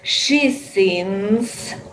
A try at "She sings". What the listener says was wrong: She sings. She sings. So you have that sound and then the S after that. She sings.